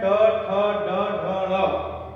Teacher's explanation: इनका उच्चारण मूर्धा से जब जिह्वा स्पर्श करती है तो इनका उच्चारण होता है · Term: मूर्धन्य वर्ण